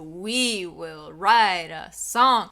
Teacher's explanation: the first word is exaggerated and then the second isn't so much. It almost just like follows. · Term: emphasis on every other syllable